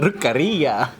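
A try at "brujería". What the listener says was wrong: No, bru with a B. Bruje. With a B. No, bruje.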